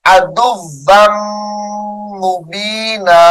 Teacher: ادغام مع الغنہ ہوگا یہاں پر